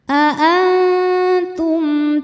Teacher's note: Di sini menghadapi ta. Maka mim sukun dibaca izhar atau jelas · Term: izhar syafawi